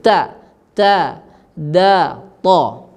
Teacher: Kemudian kita juga sudah ambil, ya, makhrajnya, tempat keluarnya 3 huruf, yaitu ta, dal dan ta, yaitu ujung lidah menyentuh pada pangkal gigi sari atas atau gusi, ya, di belakang daripada tempat tumbuhnya gigi sari atas, disentuhkan di situ, ya.